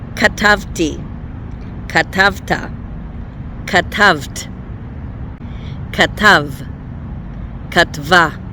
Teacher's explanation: Listen for the stress. It's always on the second syllable.